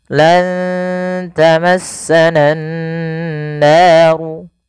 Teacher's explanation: usahakan kita menahan bunyi suara nunnya karena pada lafal ini ada bacaan gunnah, yaitu dengan menahan suara nun dan memasukkan ke rongga hidung kita